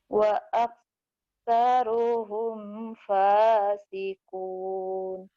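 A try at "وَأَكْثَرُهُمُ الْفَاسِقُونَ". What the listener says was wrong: wa humulnya nggak dibaca. Wa aktsaruhumul fasikun. Wa bukan bukan fa, waak. Waak.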